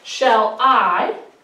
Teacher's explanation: So I would put the unstressed for shall. What's the second one? I is stressed. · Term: unstressed and stressed